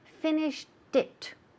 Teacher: Como finished, ya termina en T, el sonido de T, y pegamos it al culillo, justo al final. Entonces hay que decir finished it, como si fuera T-I-T, right?